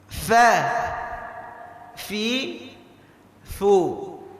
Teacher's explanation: Huruf fa itu makhrajnya perut bibir kita bagian bawah. Perut bibir kita bagian bawah kena dengan gigi seri bagian atas.